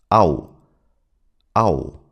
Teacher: It starts with an a sound as in father and then glides into an oo sound as in look, but the transition is very fast.